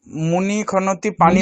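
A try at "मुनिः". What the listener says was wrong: মুনিহি, মুনিহি বিসর্গ উচ্চারণ করুন।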